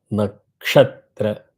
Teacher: Na tra, nakshatra, only ksha is going up. You have to hit it very hard. Nakshatra. Don't be very கொஞ்சிஃபைங் in that.